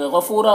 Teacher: غفورا، غین کو پر پڑھیں گے، حروف مستعلیہ میں سے ہے، فو میں واو مدہ ہے، اسے ایک الف کے برابر کھینچیں گے۔